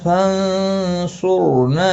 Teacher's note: کا صاد ہے، اخفا حقیقی ہوگا، گنہ کے ساتھ پڑھیں گے، را ساکن سے پہلے پیش ہے اس لیے را ساکن پورا پڑھا جائے گا، موٹا پڑھا جائے گا ، نا الف مدہ ہے، ایک الف کی مقدار کے برابر